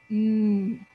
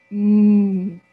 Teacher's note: my mouth is closed with my lips tight the air comes through my nose I cannot make the M sound if I plug my nose